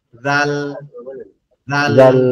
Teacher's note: জাল অক্ষরটা আমাদের জিহ্বার আগা সামনের দুই দাঁতের আগার সঙ্গে লাগবে